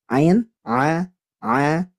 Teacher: Ain tidak boleh ke hidung. Huruf ain ini makhrajnya ada di wastul halqi atau tengah tenggorokan, tidak ada sangkut pautnya dengan hidung. Maka kalau keluar dari hidung itu salah.